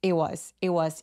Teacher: was처럼 워낙에 문장에서 많이 쓰이는 문장 패턴 같은 경우는 t를 무시하고 그냥 it was it was 이렇게 발음합니다